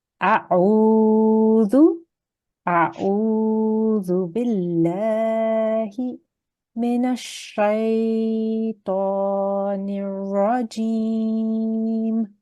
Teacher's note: A has to stay short. It's just a simple fatha.